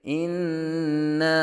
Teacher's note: یہاں نون مشدد میں غنہ ہوگا